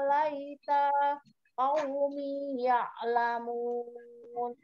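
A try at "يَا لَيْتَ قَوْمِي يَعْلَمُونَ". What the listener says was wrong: Di laitanya jangan berhenti. Hola ya laita qaumi, langsung dilanjut.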